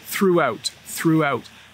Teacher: My tongue is between my teeth when I say throughout